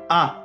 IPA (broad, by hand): æ